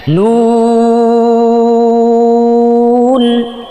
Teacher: নুন বলার সময় ঠোঁটটা রাউন্ড করতে হবে, গোল করে দিতে হবে, একেবারে চোখা করে একেবারে সামনে, যত সামনে আনতে পারেন সামনে নিয়ে আসবেন।